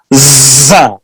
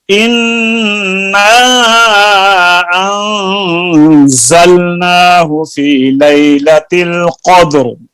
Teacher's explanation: جو زا ہے اس کے اندر سختی ہے اور اس میں سیٹی پیدا کی جاتی ہے